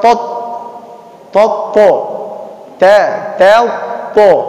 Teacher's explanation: Jadi sempurnakan harkat fathah dari ta-nya, baru ditebalkan huruf to-nya.